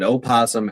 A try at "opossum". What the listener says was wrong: No, opossum is not pronounced opossum. It's still pronounced possum. The O is silent.